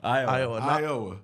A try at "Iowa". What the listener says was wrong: No, just You like breaking it up. No, it's just Iowa. Just like let it roll. Okay, it's like you break it like Iowa.